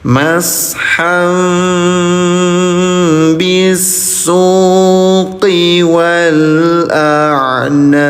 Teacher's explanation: Tanwin atau fathatain bertemu dengan huruf ba. Ya, ada mim kecil nih di sini. Apa namanya? Samar dengungkan cara bacanya selama 2 harokat.